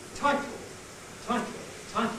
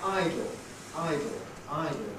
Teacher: don't second pair show here in dictionary notation title title title the I is clipped by the T that follows it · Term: clipping